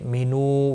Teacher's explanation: واو مدہ ہے، ایک الف کے برابر کھینچ کر پڑھیں گے